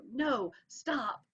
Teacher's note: Both of them get a really hard hit in a spondaic pattern.